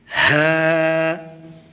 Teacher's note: ہا کو پڑھتے وقت حلق کے اس حصے سے آواز نکالیں گے جو سینے کی طرف ہے، ہا۔ حمزہ کو پڑھتے وقت بھی سیم اسی جگہ سے آواز نکالی جائے گی، حمزہ۔